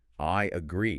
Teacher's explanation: For example, if you say the phrase, I agree quickly, to get from the I sound to the A sound, your mouth naturally adds a tiny Y sound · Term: intrusive linking